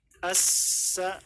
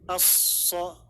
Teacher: perbedaannya antara huruf sin dengan huruf sod yang nanti akan dibaca biiznillah adalah dengan mengangkat lidah.